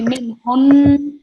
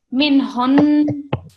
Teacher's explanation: So you don't prolong it because it's a fatha, so just 1 second, but we're going to pause on it for 2 seconds. So we're going to pause on the noon sound and produce a nasal sound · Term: noon mushaddad